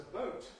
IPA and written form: bəʊt (boat)